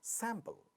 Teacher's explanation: in the second syllable we have a pa sound, but it is not getting aspirated because it is not at the initial position of a stressed syllable.